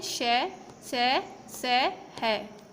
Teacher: इन व्यंजनों का उच्चारण करते समय वायु तेज गति से मुंह से रगड़ खाती है तथा ऊष्मा अर्थात गर्मी पैदा करती है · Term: ऊष्म व्यंजन